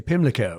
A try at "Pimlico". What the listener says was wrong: Pimlico. Pimlico. Got to flatten that O.